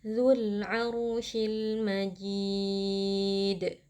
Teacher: yang merupakan huruf Qalqalah maka berlaku hukum Qalqalah kubra ya jadi Karena posisinya ada di saat waqaf jadi bunyi huruf Dal ini kita pantulkan